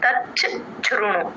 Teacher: చ కింద చ వత్తు మహాప్రాణం వట్రసుడి మూడు వినిపించాలి